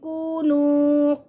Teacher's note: واو ساکن سے پہلے پیش، یہاں پہ بھی واو ساکن سے پیش، دونوں میں واو مدہ ہو رہا ہے